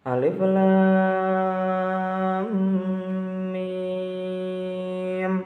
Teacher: terdapat hukum bacaan mad lazim musabbah karena adanya huruf lam dan huruf mim yang terdapat pada awal sebuah surat dan itu dibaca panjang 6 harokat ya